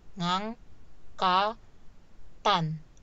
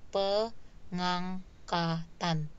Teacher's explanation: Jadi ngang, pe ngang ka tan. Jadi suku kata fonem terakhir di kata angkat yaitu fonem t itu bergabung dengan sufiks an.